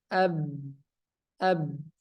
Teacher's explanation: Huruf ba sifatnya jahar, napas ditahan. Ab, ab. Ya, jelas napas ditahan, tidak keluar.